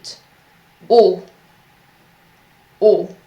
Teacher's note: in French, the sound O is very round and you have to put your lips forward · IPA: /o/